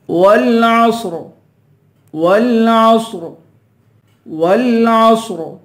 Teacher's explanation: صوت کو پر پڑھیں گے، آخر میں را ہے، را کو پر پڑھیں گے